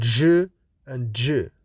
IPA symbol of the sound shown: ʒ, d͡ʒ